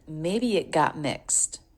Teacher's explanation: We have a couple stop T's here. Maybe it got, because in both cases the T is followed by a consonant.